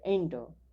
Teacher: એન્ટર, એન્ટરનું ઉચ્ચારણ કરીએ ત્યારે એન્ટર, પાછળનું જે આર છે એ ધીમેથી સાયલન્ટ થઈ જાય છે.